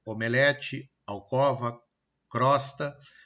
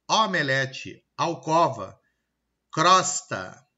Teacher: Eu tenho o E e o O fechado, omelete, alcova, crosta, mas eu pronuncio eles abertos.